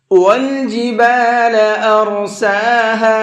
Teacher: وَالْجِبَالَ أَرْسَاهَا، اور یہاں پر بھی را کو منہ بھر کے پڑھیں گے، موٹا کر کے پڑھیں گے، اور سین کو کھینچ کر کے پڑھیں گے